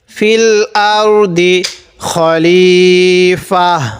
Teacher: রটা একটু মোটা করব। র সাকিনের পূর্বে জবর অথবা পেশ থাকলে এই রটা মোটা করতে হবে।